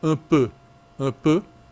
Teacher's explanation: in French, the E has been reduced to E with a specific projection of the jaw forward and the lips moving